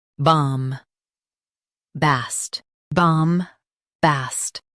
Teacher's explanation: Stress bomb and keep bast clear.